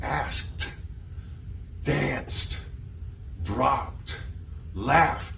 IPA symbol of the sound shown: t